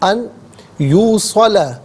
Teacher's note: یہاں نون ساکن کو یوصل کی یا کے ساتھ ملائیں گے، یا کی آواز کو غننے کے ساتھ ادا کریں گے